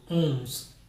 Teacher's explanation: Because usually when we see an N, we say N, don't we? Whereas in French, very often that N just means that the vowel becomes nasal